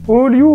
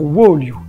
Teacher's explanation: Et au 4e siècle, la hype, quand on a une voyelle longue et accentuée, c'est de la prononcer en la comptant comme si elle comptait pour 2 lettres, en modifiant un peu l'une des deux. Le O du début va être modifié comme un OU. Ainsi, Oliu va devenir Woliu, et c'est cette double voyelle qu'on va appeler une diphtongue.